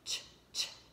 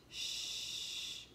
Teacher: Ch has some breath. Shh, not too much breath coming out.